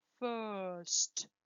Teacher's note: See that there is no R sound. It's not first, no R, okay?